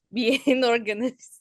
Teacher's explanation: just be careful with those single S's. That's a Z sound.